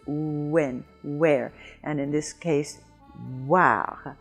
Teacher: We have it in when, where, why. It starts out like it's going to be an oo and then quickly moves. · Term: semi-vowel